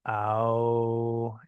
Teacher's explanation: It sort of goes from ah to ow.